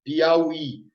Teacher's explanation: A sílaba tônica é a última. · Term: oxítona